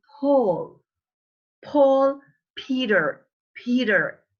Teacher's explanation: P, this is plosive with both lips, both upper and lower. You say, you see, this piece of paper moves when I say, because it's plosive, the air goes out.